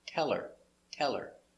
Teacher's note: the accent is on tell, not her, so the H is silent